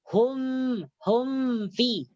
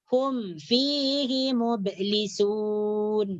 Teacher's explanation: Nah, jadi tak boleh tak boleh didengungkan. Jadi idza hum fihi mublisun, tak boleh diidghamkan dan tak boleh didengungkan